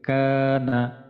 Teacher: হচ্ছে আমাদের মাদের হারাকাত এক আলিফ টেনে পড়তে হবে ইন্নাহু কানা কা এর মধ্যে মাদের হরফ আছে এক আলিফ